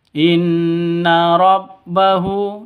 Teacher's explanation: nun tasydid berdiri sendiri gunah musyaddadah dengung dua ketukan inna rabbahu hu panjang dua ketukan karena ada dommah ke kebalik di atas seperti enam ini itu dommah tapi kebalik seperti enam seperti itu.